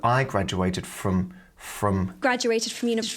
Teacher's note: graduated is pronounced like a j sound graduated graduated graduated graduated you can't really hear the O in from